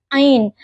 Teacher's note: Huruf ain yang makhrajnya itu di tenggorokan bawah